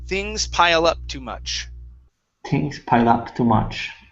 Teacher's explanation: on pile up you added an h on up